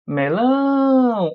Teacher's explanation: o lão é a parte mais forte